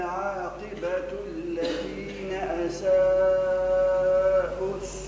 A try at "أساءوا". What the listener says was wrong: مش أساءوا أساءوا ضم ورقق الهمزة أساءوا لا مديش برش حركتين أساءوا السوء أن كذبوا